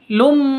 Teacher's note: Tanwin bertemu dengan mim. Cara bacanya masuk ke mim, lum, seperti itu, disertai dengung 2 ketuk. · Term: idgham bi gunnah